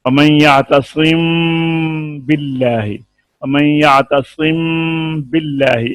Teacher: ایک الف کی مقدار میں غنہ ناک سے ادا کر کے ہونٹوں کے کھلنے سے پہلے ہی تری والے حصے کو مضبوطی کے ساتھ ملا کر با ادا کریں گے۔ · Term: اخفاء شفوی